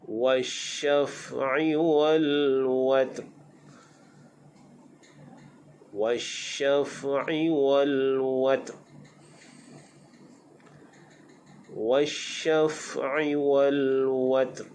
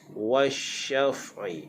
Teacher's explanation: Baik, di sini pada sebutan shin, wasyaf, pastikan shin itu berhamburan udara, sebab shin adalah bersifat dengan tafashi, berhambur udara. Apatah lagi di atas shin itu ada syaddah.